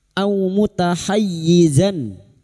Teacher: Sekarang di sini kita wasol atau terus kita uraikan pada kalimat au mutahayyizan, fathah tanwin bertemu hamzah idhar halki. Fathah tanwin dibaca jelas tanpa mendengung. Zan, nun sukun atau tanwin yang bertemu dengan salah satu dari 6 huruf ini termasuk huruf hamzah, maka bunyi fathah tanwin atau fathatain dibaca jelas tanpa mendengung.